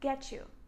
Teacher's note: "Can I get you something to drink?" Pay attention, I don't say, "Can I get you?" I say, "Get you." This is a pronunciation rule in English. When you have T followed by Y, the T is pronounced like ch sound.